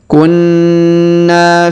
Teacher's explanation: huruf na ditahan dan ditekan karena terdapat tanda tasdid lalu kita panjangkan dua harakat karena Alif di depannya